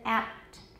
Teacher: the p is not released here we don't have apt so we write an unreleased symbol there